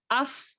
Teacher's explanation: ऊपर के सनाया उलिया जो है हमारे नीचे के होंठ के पीछे के गीले हिस्से को टच करने से फा अदा होता है